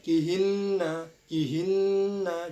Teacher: Jadi ditahan 2 harokat di huruf nun yang bertasdid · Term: gunna